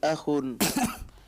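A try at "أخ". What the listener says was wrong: Akhun, hakata? Akhun, naam. Jangan bawa lagu.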